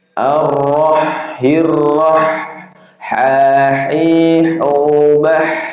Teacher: Ha itu makhrajnya tenggorokan bagian tengah ya.